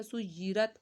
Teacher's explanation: या तशदीद है, या 2 दफ़ा पढ़ जाएगा।